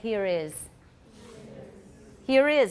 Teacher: Do you hear the R? But British is not supposed to be a rhotic dialect.